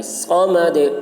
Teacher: صاد کو موٹی آواز میں. صمد. دال میں قلقلہ، آواز ٹکرائے گی.